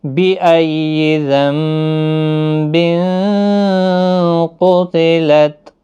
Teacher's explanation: قاف حروف مستعلیہ ہے، پر پڑھنا ہے